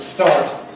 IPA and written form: stɑːrt (start)